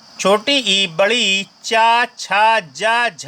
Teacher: छोटी ई बड़ी ई च छ ज झ का जो उच्चारण स्थान है वह तालव्य है यानी यह तालब से निकलने वाली ध्वनियां है अगला क्वेश्चन आपसे